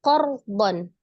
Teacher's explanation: R sukun sebelumnya ada huruf berbaris fathah qor maka r-nya dibaca dengan tebal